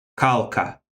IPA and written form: kʌlkə (Cuilcagh)